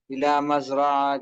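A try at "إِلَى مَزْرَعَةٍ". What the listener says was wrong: तिन। अलिफ लाम नहीं है तो दो जेर दे देंगे। इला मजरातिन, तनवीन आ जाएगी।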